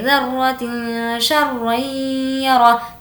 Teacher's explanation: तनवीन के बाद शीन आया जो कि हुर्फ़ इख़्फ़ा में से है, इसीलिए यहाँ पर आवाज़ को नाक में छुपाएंगे